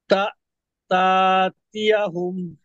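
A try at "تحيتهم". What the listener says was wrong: হ্যাঁ, টান হবে না তা, এখানে এখানে এখানে টান হবে না, হ্যাঁ? তা।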